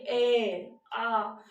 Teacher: जब आप ए बोल रहे हो, ए, तो देखो आपके गले से आवाज आ रही है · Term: कंठ